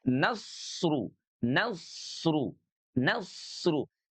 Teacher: Sin dan sod sifat suaranya itu kedua-duanya sama-sama mengalir ya. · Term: sifat rokhawah